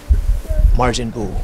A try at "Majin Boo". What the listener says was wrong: No, it's Majin Boo. There's no R.